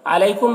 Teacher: علیکم میں یالین ہے، اسے نرم آواز کے ساتھ جلد پڑھیں گے